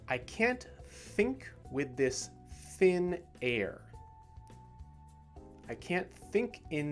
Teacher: the words think and thin do not have the vibration they are just still